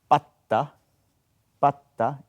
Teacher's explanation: It is the last consonant is H, but exactly it is the tone position is the same, like J and T. Patta is just stop the air. Kind of a stop T.